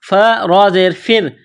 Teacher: فا کو را کے ساتھ ملانا ہے، فا را زیر فر، را کو باریک کرنا ہے، را ساکن سے پہلے والے حرف فا پر زیر ہے